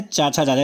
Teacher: चाछा जाझा, तालु से बोला जाता है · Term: तालव्य